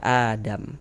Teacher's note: Untuk di sini huruf mim tidak dibaca panjang. Karena berhenti di huruf yang tidak dibaca panjang, maka hurufnya kita sukunkan, kita matikan sehingga kita baca Adam seperti itu.